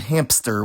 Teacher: Outside of Icelandic, other languages can sometimes use plosives as separators too, like in English with the word hamster, which normally has an epenthetic p between the m and s